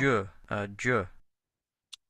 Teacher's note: Es un sonido que viene de la parte o de hacer un movimiento con nuestra lengua, de la parte alveolar a la parte posalveolar. O sea, como de aquí de adelante hacia atrás, ¿verdad?